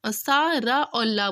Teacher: दंत और मसूड़ों से मिलकर के दंत मूल से बोला था